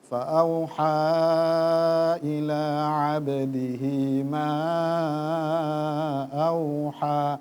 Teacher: tadi sudah naik tapi turun lagi ya agak goyang ya